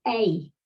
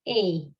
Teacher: pronounced as a true diphthong, a. Over the course of the 5th century, it seems to have changed to a pure vowel, a.